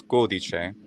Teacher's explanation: the word for a code, which is codice. It's a closed o